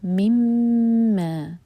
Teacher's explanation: میم پر غنہ کریں گے، 2 seconds hold کریں گے، پھر 2 سیکنڈز کے لیے اسٹریچ کریں گے. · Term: ادغام غنہ کے ساتھ